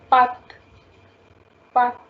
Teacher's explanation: you are going to put some more stress on vowel, and you just need to stretch the sound a little.